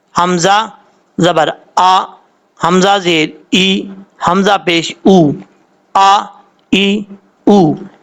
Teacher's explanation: حمزہ کے اوپر جب زبر ہو تو حمزہ سختی سے پڑھا جاتا ہے